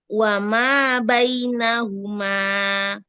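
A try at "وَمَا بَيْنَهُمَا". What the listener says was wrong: Enggak kepanjangan, sama dengan wama, sama wama bainahuma.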